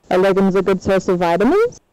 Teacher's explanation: it's a yes no question but the accented word is vitamins it will start the rise will start from the main accent to the end of the sentence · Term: yes no question tune